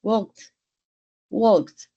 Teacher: en el verbo hablar la l es casi muda